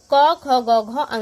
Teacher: तो ये इनका उच्चारण स्थान कहाँ से है? कंठ से है।